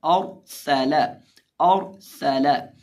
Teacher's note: सीन के अंदर हम सीटी की आवाज़ पैदा करेंगे क्योंकि सीन हरूफ़े सफ़ीरिया में से है।